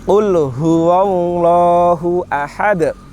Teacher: Kemudian yang lainnya saya contohkan, ini harus beda antara H dengan H. H besar, H yang keluar di tenggorokan bagian pangkal, bagian dalam. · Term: H tebal